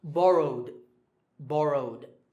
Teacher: the last sound is w, which is voiced, so the ed ending becomes d.